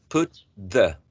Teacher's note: T is an alveolar sound, right? The, it's an interdental sound.